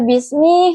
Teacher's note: huruf ba yang makhrajnya itu di dua bibir yang saling bertemu. Huruf sin makhrajnya itu di ujung lidah yang menempel pada gigi seri bawah.